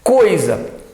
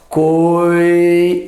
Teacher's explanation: o o e o i saem na mesma emissão de ar, coisa, a mesma emissão de ar. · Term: ditongo